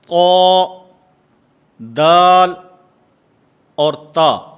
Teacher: زبان کی نوک، نوک زبان اور ثنایا علیہ کی جڑ، اس سے 3 حروف ادا ہوتے ہیں